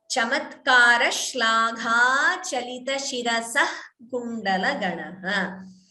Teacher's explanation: whenever visarga is followed by ka or kha, we get jihva muliya, right? So that visarga is not pronounced fully.